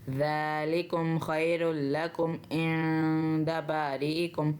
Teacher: جب بھی نون ساکن یا نون تنوین کے بعد حرف تا، سا، جیم، دال، زا، ذ، سین، شین، صاد، ضاد، طا، ظا، ف، قاف، کیف، یہ حرف آ جائیں تو ہم نے نون کی آواز کو واضح نہیں کرنا، نون کی آواز کو ہم نے ناک میں چھپا کے پڑھنا ہے۔